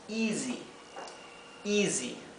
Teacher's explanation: la s cuando se encuentra entre medio de dos vocales y en este caso la y es una vocal en inglés la s se pronuncia como una S como un zumbido